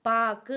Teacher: உகரம் தன்னுடைய ஒரு மாத்திரை அளவிலிருந்து அரை மாத்திரையாக அளவுக்கு குறைந்து ஒலிக்கும் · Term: குற்றியல் உகரம்